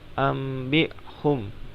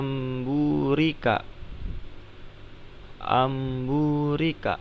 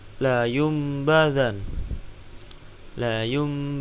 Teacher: jika nun mati atau tanwin bertemu dengan huruf ba maka membacanya itu berubah menjadi Meme dan agak didengungkan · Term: iqlab